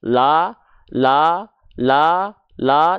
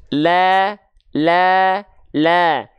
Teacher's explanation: buka mulut sambil senyum ketika mendapati huruf berharakat fathah yang dia vokalnya bukan o tapi a kalau a berarti tandanya dia adalah huruf yang tipis ya biar